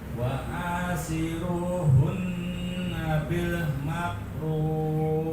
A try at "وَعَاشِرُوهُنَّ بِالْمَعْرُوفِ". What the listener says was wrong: bukan mak tapi ma. Kita korokan ma'ruf.